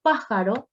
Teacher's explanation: pájaro, que es una palabra esdrújula, que lleva mayor carga de voz en la antepenúltima sílaba